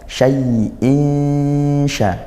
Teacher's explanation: Hakiqi dibaca samar dan dengung. Samar apanya? Bunyi nunnya samar. Samar-samar masuk ke huruf syin juga gak masuk seperti idgham sepenuhnya tapi tidak juga dibaca jelas sepenuhnya. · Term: ikhfa